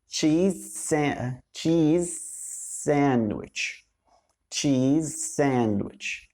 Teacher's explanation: كلمة cheese آخر صوت فيها z، وكلمة sandwich أول صوت فيها s، صوت ال s، صوت ال z. فأنا وأنا بقول كلمة cheese نطقت صوت ال z وأخدت معاها ال s بسرعة. cheese sandwich، ربطت ما بين الصوتين. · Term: similar consonants